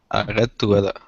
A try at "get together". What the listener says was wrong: a little stronger with the g. To get together.